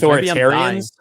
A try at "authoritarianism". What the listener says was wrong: No, ism.